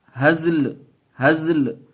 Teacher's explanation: لام کی آواز آئے گی، حرکت کی نہیں